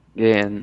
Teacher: indica que a vogal anterior é longa